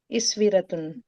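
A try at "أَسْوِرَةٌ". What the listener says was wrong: शुरू में जेर नहीं आती, कभी भी जबर ही आती है, अस्वीरतुन।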